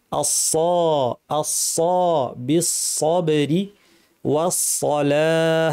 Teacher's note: জিহ্বার শীর্ষ নিচের পাটির দাঁতের গোড়ায় লাগিয়ে সদ উচ্চারণ হয়। ভারী করার জন্য জিহ্বার পেছন দিয়ে আওয়াজটাকে উপর ঠেলতে হয়। আস, ঠোঁট গোল না করে, ঠোঁট স্বাভাবিক থাকবে। আস, আস বিসসবরি ওয়াসসালাহ, এখানে সদ ভারী কিন্তু লাম যেন পাতলা হয়।